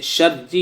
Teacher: را مشدد پر زیر آئے گا تو را باریک ہوگی. جیسے شرجی کی را، یہاں را مشدد ہے اور اس کے نیچے زیر ہے، جیسے آپ نے پڑھا را مشدد پر زیر آئے گا تو را باریک ہوگی.